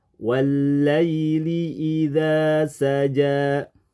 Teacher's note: dua-duanya menurut aturan tajwid mesti dibaca panjang dua harakat